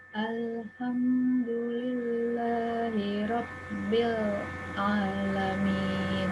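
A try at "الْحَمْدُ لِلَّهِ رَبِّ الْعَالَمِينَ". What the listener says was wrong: Ya, kurang lebih seperti itu. Cuma jangan diputus, Bu ya.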